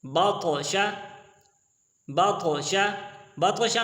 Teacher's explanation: طا ہے حروف مستعلیہ، طا موٹی ہوگی، اور دوسری بات یہ ہے کہ طا قطب و جد میں سے بھی حروف قلقلہ میں سے ایک حرف ہے، اور یہ اس کے اوپر جزم آیا ہوا ہے جو سکون کی حالت میں ہے۔